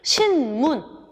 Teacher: 뒤에 있는 미음 때문에 양순음화돼. 신문, 조음 위치가 변하는 이유는 뭐냐면 발음을 편하게 하려고.